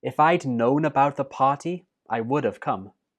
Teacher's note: the last word come is the main verb so it does get the stress